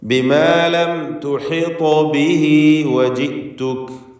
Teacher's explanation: ലം തുഹിത ത്വാഇന് സുക്കൂനുണ്ട്. ഖൽഖല സൂറ നൽകി ത്വാഇൻ്റെ സുക്കൂനിനെ ചലിപ്പിക്കണം. അതോടൊപ്പം ത്വാഇന് തഫ്ഖീമും ഉണ്ട്.